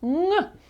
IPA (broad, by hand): ŋ